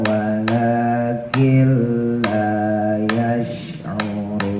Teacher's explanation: syinnya tebelin ya airnya tekan